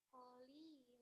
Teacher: Nah, yang koli li-nya matobi'i, lannya kan harusnya lan. Karena di akhir ayat jadi dibacanya la. Kolila. Nah, la ini namanya mad iwad ya.